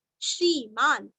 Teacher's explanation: श्री दीर्घ और न आधा